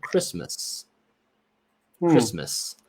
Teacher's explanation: That A, which should be a short A, is actually an sound, a schwa sound.